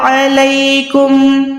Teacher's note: عین حلق کے درمیان سے